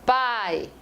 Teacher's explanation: Então, quando eu falo pai, o I, ele não é a tônica dessa palavra, é o A. Então, A já é mais forte que o I por natureza.